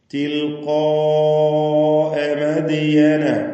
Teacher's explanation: മദിയന ദാലിന്റെ സുക്കൂൻ ഖൽഖല സുഗ്റ നൽകി ശബ്ദം ഹറക്കത്ത് പോലെ ചലിപ്പിച്ച് വ്യക്തമാക്കുക. · തിൽഖാഅ ഈ പദത്തിൽ ഖാഫിനെ അതുപോലെ അലിഫിനെ ഇവ രണ്ടിനെയും തഫ്ഖീം ചെയ്യണം, തടിപ്പിച്ചുച്ചരിക്കുക. അതോടൊപ്പം അലിഫിന് മദ് മുത്തസിൽ വാജിബ് എന്ന ദീർഘം നൽകി നിർബന്ധമായും 4-5 ഹറക്കത്തിന്റെ അളവിൽ ദീർഘിപ്പിക്കണം